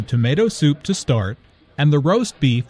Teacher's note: tomato soup, roast beef, and mashed potatoes are compound words. The stress falls on the second word in each phrase.